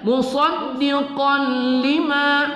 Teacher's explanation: Kemudian musaddiqan lima, qaf baris dua di atas qan, ya. Musaddiqan lima kita idghamkan pada lam, tidak kita dengungkan pada idgham bila gunnah, ya. Musaddiqan lima, ma kita baca satu alif dua harakat.